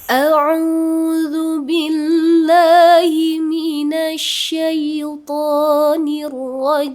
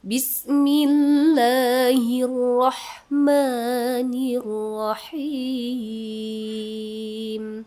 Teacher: Untuk irama nahawan ada 3 ya rumus nada seperti biasa. Nada satunya nada naik, keduanya datar, ketiganya turun.